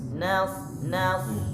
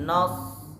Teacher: Ingat hurufnya fathah. Ihdinas, nas. Jangan nos, karena seret ke dalam huruf so.